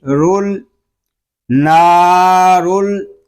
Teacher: را کو پر پڑھیں گے اور را کو لام کے ساتھ ملا کر پڑھیں گے